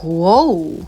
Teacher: instead of saying oo, go like oh.